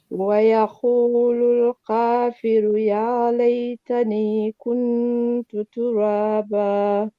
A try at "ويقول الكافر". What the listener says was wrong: And here, yakulul kafiru. Make sure we hear our ru there. Kafiru.